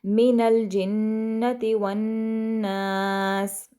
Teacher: من الجنتی والناس، اس طرح سے جنتی نون پر غنہ اور اس طرح سے والناس پہ بھی جو نون ہے اس پر ہم غنہ کریں گے